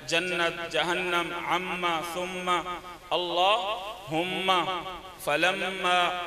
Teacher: نون مشدد اور میم مشدد پر ہمیشہ غنہ ہوتا ہے، جیسے سورۃ الناس کی مثال ہے جنت، جہنم، عما، ثم، اللہم، فلما، تو یہ ہمیشہ غنہ ہوگا۔